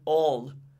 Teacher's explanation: But then you have the L that you have in all. When you have words like all, your L goes down in your throat.